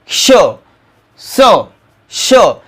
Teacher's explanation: कारण याचा उच्चार करत असताना श, स, श आपली थोडासा आपण हवा बाहेर फेकतो आणि थोडंसं घर्षण होतं, त्यामुळे हे उष्मे व्यंजन आहे.